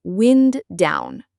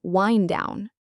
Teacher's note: We don't really say the D in wind very strongly. It is almost like windown. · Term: linking